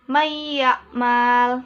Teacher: nun sukun atau tanwin dimasukkan menjadi satu dengan huruf sesudahnya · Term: Idgham Bighunnah